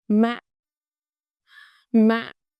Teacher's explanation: thanh nặng is a heavy low tone. Drop quickly, short and heavy.